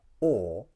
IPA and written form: ɔː (or)